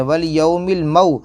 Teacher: واو ساکن سے پہلے اگر زبر ہو تو واو لین ہوگا، نرم آواز سے پڑھیں گے۔ والیوم المو، میم واو زبر مو، واو ساکن سے پہلے یہاں پر بھی زبر ہے، یہاں پر بھی واو لین ہوگا، نرم آواز سے پڑھیں گے۔